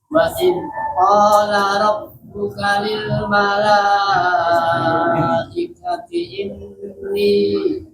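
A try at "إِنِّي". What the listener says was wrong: jangan saktah. Ja itu saktah. Kalau berhenti, kalau wasol. Jangan setengah-setengah.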